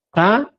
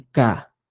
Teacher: más velar un poco friccionado y ka es sencillo